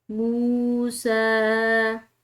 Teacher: آلو موسیٰ سین کے اوپر کھڑی زبر کی وجہ سے اس کو لمبا ادا کیا اور میم کے بعد واو ساکن آ رہی ہے تو اس میم کو ہم نے ایک الف کے برابر کھینچ کر پڑھا